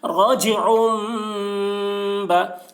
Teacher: رجعم با، یہ عین کے اوپر دو پیش کی تنوین ہے، تنوین کے بعد با آ رہا ہے، اس لیے تنوین کو میم سے بدل کر غنہ اور اخفا کے ساتھ پڑھیں گے ، اس کو اقلاب کہتے ہیں، رجعم با، عین یا زیر